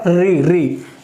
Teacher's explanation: और री ये होता है मूर्धा से, जब पीछे की तरफ, यानी कि तालु से थोड़ा पीछे, ये तालु है ना, इससे थोड़ा पीछे की तरफ हमारी जीभ स्पर्श होती है।